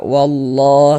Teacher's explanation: Huruf lam jalalahnya dibaca tabkhim, dibaca tebal. · Maka lafaz Allahnya dibaca tabkhim, huruf lam jalalahnya itu baca tabkhim, dibaca tebal. Sehingga kita baca wallah seperti itu.